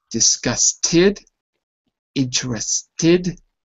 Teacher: So disgusted and interested end with the T, therefore they go in the id column, because after a T, the ed pronunciation of the past tense is id.